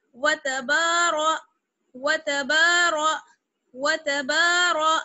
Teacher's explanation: را کو موٹا پڑھیں گے کیونکہ را پر زبر ہے. وتبار وتبار وتبار, تا با واو کو باریک, را کو موٹا.